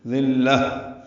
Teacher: ذلہ دال نرمی سے پڑھیں گے، لام سے ملائیں گے اور لام کو تا مربوطہ سے ملا دیں گے، وقفاً ہا میں تبدیل ہو جائے گی، دونوں پیشیں ختم ہو جائیں گی، ہا پہ ہمس ہوگا.